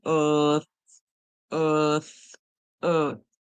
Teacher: the TH, we hear tongue between our teeth. So we hear earth, earth, earth.